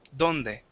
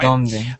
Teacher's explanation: feel where your tongue is at. It's up against the back of your teeth. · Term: D in Spanish